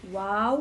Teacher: Waw, makhrajnya 2 bibir.